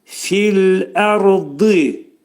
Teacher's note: Ona görə ra hərfi qalın oxunacaq. Ra hərfinin məxrəci dilimiz yuxarı üst dişin altında ətə dəyir.